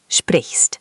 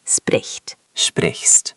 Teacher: The ch is soft, like a hissy sound.